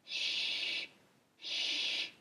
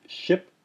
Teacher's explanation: s with the with the accent mark over the top is makes a hissing sound with the teeth fully closed together so it sounds like sh sh sh teeth should be clenched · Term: palatal sibilant